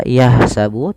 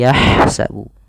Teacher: Alirkan huruf ha kecil. Hati-hati jangan terbaca dengan huruf ha besar.